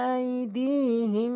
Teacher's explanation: আইদিহিম, এখানেও ১ আলিফ টানবেন জেরের বাম পাশে জজমেলা ইয়া হওয়ার কারণে